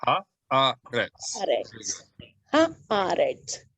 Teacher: it's very easy to fuse the two vowels together and accidentally say haaretz, right? We don't want to do that.